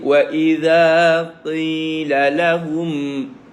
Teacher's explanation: Lidah keluar. Lidah kena keluar sikit nah. Wa idza sebab dia zal.